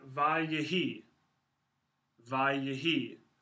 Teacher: So the final hey falls off, which means the final yod becomes a vowel instead of a consonant, and you get this lengthened form, and the emphasis, the accent here is on the end, and the initial vowel reduces. And you've got vayehi, vayehi.